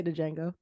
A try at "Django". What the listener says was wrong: The D is silent. He even says in the movie the D is silent.